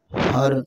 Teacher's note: रा से साकन है, इससे पहले ज़बर है, रा भी पुर हो जाएगा।